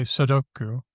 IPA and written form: sədoku (Sudoku)